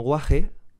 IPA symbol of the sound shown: h